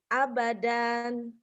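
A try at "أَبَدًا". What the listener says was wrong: Asalnya abadan. Enggak ada yang panjang. Abadan. Abadan. dihentikan abada.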